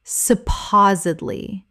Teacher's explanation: Correct pronunciation, supposedly. 4 syllables with the stress on the second. The D must be pronounced.